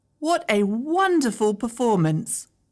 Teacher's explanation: this is falling intonation because it's an exclamation that shows I'm happy and content